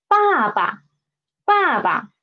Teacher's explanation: the second one will usually be read in the neutral tone